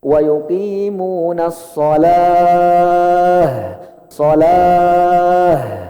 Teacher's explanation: Tak yang bulat kalau berhenti berubah hukumnya jadi ha besar. Yang tempatnya tenggorokan bawah. Maka cara bacanya harus ada tekanan di sini. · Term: tak marbutoh